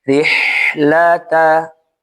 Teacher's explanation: Huruf ha di sini dibaca rokhawah, mengalir